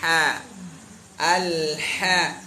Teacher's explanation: Tengah tenggorokan sama seperti ain.